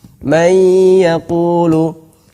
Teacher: Panjangnya adalah 2 harokat. Panjangnya adalah 2 harokat gunnahnya tersebut. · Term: idgham naqis